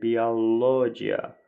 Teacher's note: Vurğu sözün üçüncü hecasına düşür